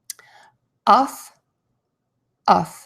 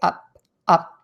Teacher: So relaxed lips for the uff, for the sound. Very short. Uff, uff. And you can see I tend to bite the inside of my lip for the F sound.